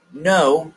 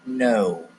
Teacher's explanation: If you say that word, no, your voice should be going down. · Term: intonation